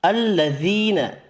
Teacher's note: یا مدہ 1 الف کی مقدار میں کھینچ کر پڑھیں گے